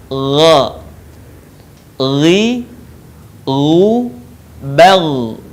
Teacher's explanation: huruf ini keluar dari tenggorokan yang terdekat dengan rongga mulut kita diucapkan dengan lembut suaranya tanpa mengalir udaranya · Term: huruf g